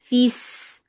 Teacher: Sin will get sifa of rakhawa. It is light and it has safir.